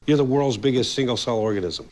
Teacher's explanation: the S at the end of Worlds is is pronounced as a zed sound not a voiceless s